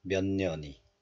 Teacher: So, the final consonant ch becomes nasalized into n, n sound. So, 몇 becomes 면, 몇년이.